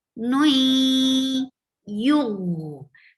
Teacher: Sh, sh, nui, and there is idgham with gunna. Nui, you're merging the sound of tanween into ya, nui, and bringing gunna into it.